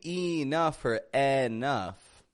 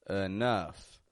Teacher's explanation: I'm making the E in the beginning into a schwa sound, an sound. And then the OU in the middle are getting an sound as well, but a stronger one, a short U.